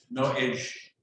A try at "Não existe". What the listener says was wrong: Não. With the nasal. Não existe.